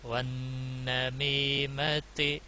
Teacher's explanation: نون مشدد ہے تو اس لیے گنہ ہوگا